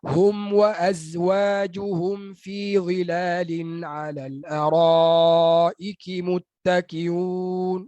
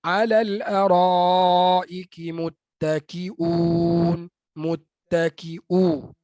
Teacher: huruf hamzah yang baris depan tu hilang kualiti hamzahnya. Dia tak jadi tahqiq. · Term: hilang hamzahnya